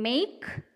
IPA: meik